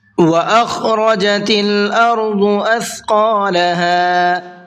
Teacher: خا کو پر کر کے پڑھنا ہے اور حلق سے نکال کر کے پڑھنا ہے، ارض ضاد کو بھی پر کر کے پڑھنا ہے۔